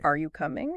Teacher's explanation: if you go up at the end are you coming yeah now it's a question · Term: intonation